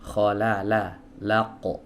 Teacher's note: Huruf qaf ini adalah huruf yang keluar dari pangkal lidah ya. Pangkal lidah itu bagian lidah yang dalam ya